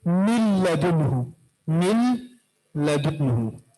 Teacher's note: तो फिर हमने क्या कहा कि लाम और रा में इदगाम बिला गुन्ना होगा, इदगाम तो होगा लेकिन गुन्ना नहीं, तो यहां पर भी गुन्ना नहीं होगा। नून को हमने लाम में दाखिल किया बगैर गुन्ना का